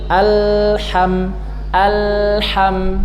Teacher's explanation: Jadi lam sukun alha alha tidak boleh mantul alham. Nah sebagian orang kalau baca alha berarti dia sudah memantulkan huruf lam yang seharusnya tidak ada sifat qalqalahnya.